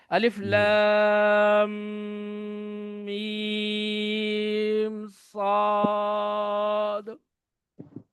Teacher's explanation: یہ ناک کی اس نرم ہڈی سے ادا کر رہا ہوں، منہ سے نہیں ادا کر رہا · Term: غنہ